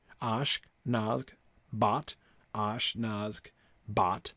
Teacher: we have the ah sound, the ah vowel has been stressed 100% of the time so far